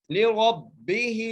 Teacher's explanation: با کے نیچے زیر ہے, ہا کے نیچے کھڑی زیر ہے, اس لیے ایک الف کی مقدار کھینچ کے پڑھیں گے